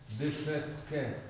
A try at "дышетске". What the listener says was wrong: Ке, дышецке. Вот это сочетание ТС, по-моему, я упоминала на прошлом уроке, он такой будет похожий на С. Дышецке.